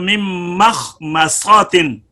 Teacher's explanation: یہاں پر میم کے اندر خیال رکھنا چاہیے کہ خا یا صاد کی جو تفخیم ہے اس سے یہ میم جو ہے یہ متاثر نہ ہو جائیں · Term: باریک